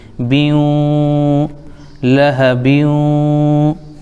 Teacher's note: ہوگا، تو با کو واو میں ملائیں گے، بیوں، ناک میں آواز ایک الف روکیں گے